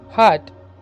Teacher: ഗ്ലോട്ടൽ, vocal cords ആർ articulators. Glottis ഉപയോഗിച്ചാണ് ഉച്ചരിക്കുന്നത്.